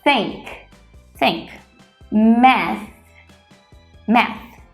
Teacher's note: um é sem som apenas assopramos o ar por isso o chamamos de unvoiced